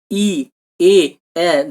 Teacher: দেখো জিভটা এগিয়ে আসছে সামনের দিকে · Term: সম্মুখস্থ বা প্রসারিত ধ্বনি